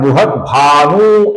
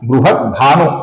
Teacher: भानु का जो न है दोस्तों इसका हमें ह्रस्व होने के कारण थोड़ा छोटा ही उच्चारण करना है। कुछ लोग इसका उच्चारण बृहत भानु ऐसा दीर्घ करते हैं जो कि गलत उच्चारण है।